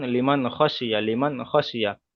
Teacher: নুন সাকিনের পরে হুরুফে হালকির 6টি অক্ষরের মধ্যে থেকে খ এসেছে, তাই নুন সাকিনকে বিনা গণ্যায় জাহির করে পড়তে হবে, একে ইজহার বলা হয়